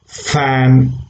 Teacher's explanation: when you say f, as in fan, again between lower lips and upper row of teeth the air escapes